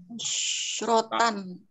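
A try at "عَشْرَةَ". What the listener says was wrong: Tidak ada tanwin, tidak ada tanwin. Angka belasan nggak pernah ada tanwin. Bukan asyarota, bukan. Iya, sukun. Ihda asyrota. Ya, sama ujungnya sama aja. Asyrota disukunkan ya. Asyrota fathah. Mabni ini nggak berubah, nggak ada asyratu, nggak ada. Ihda asyrota, ithnata asyrota.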